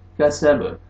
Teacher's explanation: बा साकिन है, बा हुरूफ कलकला में से है, डबल साउंड आएगा